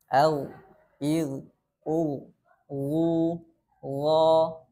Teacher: sifat yang ketiga pada huruf gain ini yaitu istilla atau Pangkal lidahnya terangkat sehingga menghasilkan bunyi huruf Gin tebal